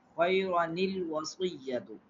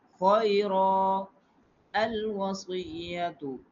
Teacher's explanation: When the temporary hamza comes after a tanween, like two zabar two z two page, the hamza wasli is dropped in the case of wasl mean without pausing, continue reading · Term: noon qutni